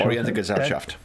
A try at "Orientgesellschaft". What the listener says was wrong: No middle E. Oriente, that sounds like you were from Italian and learning to speak German, and you just insert vowels where they are not.